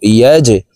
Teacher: ইয়া জিম জবর ইয়াজে, জিম কলকলার হরফ নিচের দিকে ধাপিত করে ধাক্কা দিয়ে উচ্চারণ করব